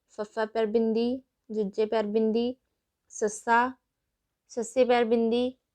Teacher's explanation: ਸੰਘਰਸ਼ੀ ਵਿਅੰਜਨਾਂ ਦੇ ਵਿੱਚ ਸਾਹ ਉਚਾਰਨ ਅੰਗਾਂ ਨਾਲ ਰਗੜ ਕੇ ਲੰਘਦਾ ਹੈ ਅਤੇ ਹਵਾ ਹੌਲੀ ਹੌਲੀ ਬਾਹਰ ਨਿਕਲਦੀ ਹੈ। ਭਾਵ ਇਹਨਾਂ ਦੇ ਉਚਾਰਨ ਸਮੇਂ ਸਾਹ ਨੂੰ ਥੋੜਾ ਸੰਘਰਸ਼ ਕਰਨਾ ਪੈਂਦਾ ਹੈ ਬਾਹਰ ਨਿਕਲਣ ਦੇ ਲਈ, ਇਸ ਲਈ ਇਹਨਾਂ ਨੂੰ ਸੰਘਰਸ਼ੀ ਵਿਅੰਜਨ ਕਹਿ ਦਿੱਤਾ ਗਿਆ ਹੈ।